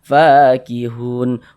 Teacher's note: Ini karena di atas huruf fa ada tanda ini alif kecil atau harakat fathah berdiri. Sehingga fa dibaca panjang. Mad thobbi'i panjang dua harakat. Fakihun. Hun dibaca panjang.